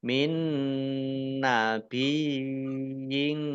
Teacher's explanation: ini idgham mutamasilain mendengung Nun ya Nun ditandai nunnya ada tasdidnya Nun tasdid dibaca ghunah atau mendengung ditahan dua harakat · Nun tasdid dibaca gunnah atau mendengung ditahan 2 harokat. Min nabiyin ya tasdid yang didahului dengan kasroh namanya mat tamkin ya ditahan panjang 2 harokat.